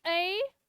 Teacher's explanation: वे स्वर जिनके उच्चारण में मुख द्वार आधा खुलता है अर्धविव्रत कहलाते हैं